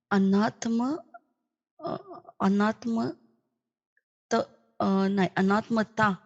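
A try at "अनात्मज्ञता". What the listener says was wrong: Not anatmata. You missed one syllable. Anatma. Jna. Jnata. Anatma jnata.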